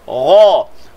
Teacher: Ra tebal tanpa muncung.